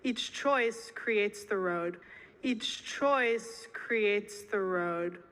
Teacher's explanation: Então você tem que fazer esse ch 2 vezes seguidas.